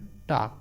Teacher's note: मूर्धन्य अल्प प्राण अघोष वर्ण